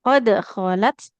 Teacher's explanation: Huruf dal sukun qalqalah memantul